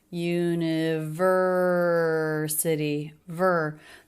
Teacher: the word university five syllables long stress on the third syllable